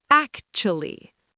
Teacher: The stress is heavy on the first syllable.